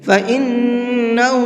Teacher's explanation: فَإِنَّهُ اس نون کے اندر غنہ کریں گے۔